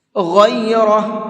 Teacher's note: غین کو بھی اور را کو بھی، دونوں کو منہ بھر کے پڑھیں گے